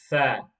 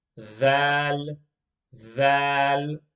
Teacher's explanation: the tip of the tongue touches the edge of the front two teeth